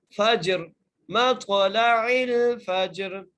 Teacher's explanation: را کو ہم ساکن کر رہے ہیں وقف کی صورت میں اس لیے یہ را موٹی کر کے پڑھی جائے گی